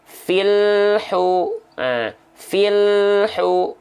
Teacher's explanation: antara bunyi Al dengan bunyi Hu itu enggak boleh ada jeda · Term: lam sukunnya